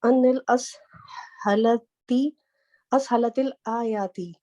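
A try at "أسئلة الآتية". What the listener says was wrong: असइलती आतियती। अच्छा ये आयात नहीं है, ठीक है, ये आयात नहीं है, ये है जैसे उर्दू में बोलते हैं ना आती, ये वो वाला लफ्ज है।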